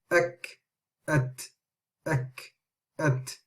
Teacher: With the kaf and the ta, there's just a small amount of air which passes through.